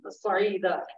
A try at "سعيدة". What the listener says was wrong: اب یہ سعیدہ میں صوت کو آپ پر کیوں کر رہے ہیں؟ یہ تو سین ہے، اس میں کون سا پر کرنا ہے؟ سعیدہ سعیدہ یہ، اور صفر نہیں ہوتا، صفر